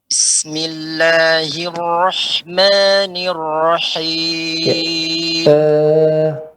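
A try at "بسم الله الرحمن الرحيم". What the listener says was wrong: Jangan terlalu ditekankan sekali, Pak. Bis. Tapi netral saja ya. Ibnu Jazir mengatakan disempurnakan sifat-sifat tersebut ya tanpa takalluf. Bismillah, tidak. Bismillah ya. Dengan santai, Pak, menyempurnakan.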